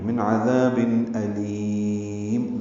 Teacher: تنجیکم من نون ساکن کے بعد عین آنے کی وجہ سے اظہار حلقی ہے، عذاب عین وسط حلق سے ادا ہوتا ہے، ذال نرمی سے پڑھتے ہیں، ذا الف مدہ ہے 2 حرکات لمبا کرتے ہیں، تنوین کے بعد حمزہ آنے کی وجہ سے اظہار ہے۔